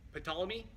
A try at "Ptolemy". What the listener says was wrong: The P is silent, so it's Ptolemy.